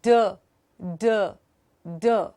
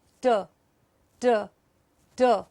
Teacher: D has a higher level of muscular activity.